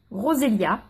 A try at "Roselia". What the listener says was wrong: Non, le E, ça se prononce pas.